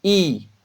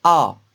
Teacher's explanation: I, on la prononce avec une bouche fermée, donc c'est une voyelle fermée. A, on la prononce avec une bouche grande ouverte, donc c'est une voyelle ouverte.